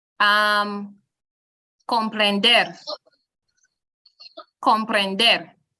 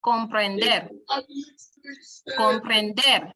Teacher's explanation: the emphasis or the stress moves to the last syllable. And this is in the case of words that end with consonants except N or S.